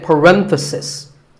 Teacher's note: The stress is on ren.